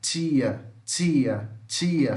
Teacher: Então veja que o português tem africada alvéolo palatal surda